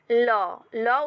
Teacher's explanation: দিয়ে বেরিয়ে যায় তাকে পার্শ্ববিক ব্যঞ্জন ধ্বনি বলে যেমন ল ল উচ্চারণ করার সময় আমাদের জীভার দুপাশ দিয়ে শ্বাসবায়ু বেরিয়ে যায়